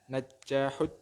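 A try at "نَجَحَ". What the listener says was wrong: Jangan najaha, salah najaha. Najaha. Najaha. Itu jimnya jangan tasdid, nanti bingung artinya. Jangan najaha. najaha gitu aja. Ya itu betul ya, najaha ya.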